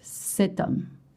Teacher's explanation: And I know you see H, but in French the H is silent and mute, so you don't pronounce it